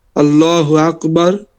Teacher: লামটা মোটা অথবা ফুর অথবা মোটা উচ্চারণ হয়